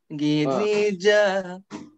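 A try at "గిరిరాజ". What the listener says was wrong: See, first of all, you are using your nasal a little bit too much. Giri ra, that ra syllable, where is the need to use your nose? Giri ra ra. It should come from here. Giri ra.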